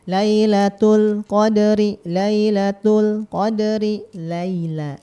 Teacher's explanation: huruf lam itu kan dia tepi ujung lidahnya ya nempel ke gusi kita yang di atas nih depan. Nah, yang gigi atas ataupun gusi ya.